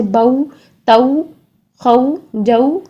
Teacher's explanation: ساکن سے پہلے اگر زبر آئے تو ہم اس کو پڑھیں گے او کی ساؤنڈ میں